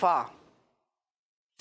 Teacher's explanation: اور جو ہمارے ہونٹوں کا اندر کا حصہ تھوڑا سا اندر ہی ہے, یہ تر حصہ ہے, گیلا ہے نا, یہ منہ کے اندر ہے, تھوک ہوتا ہے, تو یہ تر حصہ ہے. تو فا جو ہے وہ نچلے ہونٹوں کے, نیچے والے ہونٹوں کے تر حصے سے زیادہ ہوتا ہے